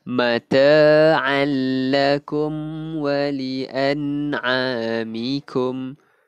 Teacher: Tetapi dia kan bila alif waw ya tanwin nun mati ataupun tanwin bertemu lam ataupun ra, 2 huruf ni je. Kita masukkan tapi tak dengung. · Tanwin bertemu lam, idgham bila gunnah. Idgham ni memasukkan kalau bila gunnah dengan dengung, bila gunnah ni tanpa dengung. Jadi kita masukkan tapi tak dengung.